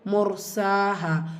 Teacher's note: two counts கொடுத்து ஓதணும் முர்ஸாஹா மீம் தும்மா பெற்று ரா சுகூன் அதாவது ரா சுகூன் பெற்று அதற்கு முந்தைய இடத்துல தும்மா இருக்கும்போது அந்த ரா சுகூனை வல்லினப்படுத்தி ஓதணும்